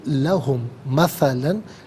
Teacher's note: لہم میں میم ساکن ہے، مثلاً کی میم کے ساتھ ملائیں گے، میم کی آواز کو غنّے کے ساتھ ادا کریں گے